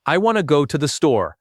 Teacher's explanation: with the stress landing hard on want and store and everything else shrinking down. If you pronounce every single word with the same weight and the same length, your speech sounds mechanical, even if your grammar is flawless.